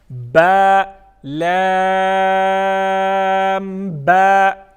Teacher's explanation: لام با، ٹھیک ہے، یعنی پہلے با ہے حروف قلقلہ میں سے، پھر لام ہے. با میں 1 الف کے برابر مد ہوگی اور لام میں 5 الف کے برابر مد ہوگی. پھر آخر میں پھر سے با کی ادائیگی میں 1 الف کے برابر اس میں ہم مد کریں گے، یعنی کھینچ کے پڑھیں گے، ٹھیک ہے.